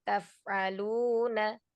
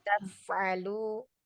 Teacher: karena ada Lam, Nun dihilangkan dan penekanan bergeser dari Lam ke 'Ain, pindahkan ke belakang, taf'alu.